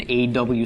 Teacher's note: in Ashkenazic the comets can be pronounced as a short O or almost it's almost an aw sound aw okay that's in